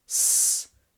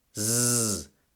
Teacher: The vocal cords don't vibrate when you say S, so the S is voiceless. The vocal cords vibrate when you say Z, so the Z is voiced.